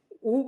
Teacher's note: ऊ जैसे कहते हो, पीछे का जो जीवा का भाग होता है वो ऊपर उठ जाता है